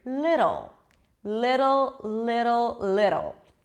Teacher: you bring the tongue up and it slightly touches the upper palate it sounds like a D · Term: flap T